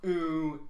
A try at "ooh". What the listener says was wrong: It's actually ooh, not ooh. You elongated it for like a syllable too.